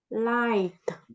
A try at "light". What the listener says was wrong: Light with the T at the end.